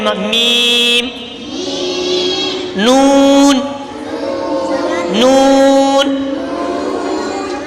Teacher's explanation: دونوں ہونٹوں کے خشک حصے سے ادا ہوتے ہیں۔ میم، یہ خشک حصے جو باہر والے ہیں نا یہ آپس میں لگتے ہیں تو میم میم۔ · زبان کا کنارہ اور دانتوں کی جڑ سے ادا ہوتا ہے